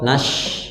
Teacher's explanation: Syanya kurang hames ya, kurang melebar.